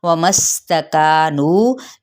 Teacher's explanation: वाव होंठों की ना तमाम गुलाई के साथ और मीम की ज़बर को सीन के साथ, सीन पे सीटी